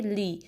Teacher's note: لام کی کسرہ کو شارپ پڑھیں گے، لے نہیں پڑھیں گے بلکہ لی